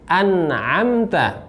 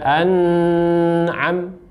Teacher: An'amta di sini nun matinya, ya, tidak ada dengungan.